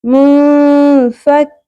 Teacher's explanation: ہم نون ساکن کی ساؤنڈ کو چھپائیں گے بھی اور ناک میں آواز کو ٹھہرائیں گے بھی ، یعنی غنہ بھی کریں گے، اخفا بھی کریں گے اور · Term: اخفا مع الغنہ